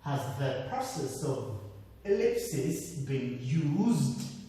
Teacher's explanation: the word process, you have to pronounce it right. You have to pronounce the first syllable, stressing it. The second syllable is when you will use the falling tone.